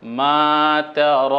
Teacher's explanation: এরপরে দেখুন ত আকার তা র এর উপর দীর্ঘ আকার আছে দীর্ঘ আকার থাকার কারণে টান একটু লম্বা হবে